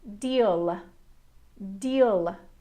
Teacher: the dark L is slightly more exaggerated than the light L - "luh". Deal deal.